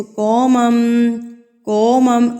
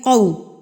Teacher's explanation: یہ قومم نہیں ہے، یہ ہے قو. قاف زبر واو قو، ٹھیک ہے، واو لین ہے یہ